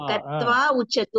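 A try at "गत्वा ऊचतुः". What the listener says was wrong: ఊచతు విడితేసానమ్మా. గత్వా దీర్ఘం పెట్టండి అనేది. గత్వా విడతీయండి అమ్మా. గత్వా గ్యాప్ అని తీసుకోండి.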